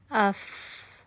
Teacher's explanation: आपकी जबान जो है वह सीधी है। हर्फ बारीक है। बारीक आवाज है। इस्तफाल की क्वालिटी है।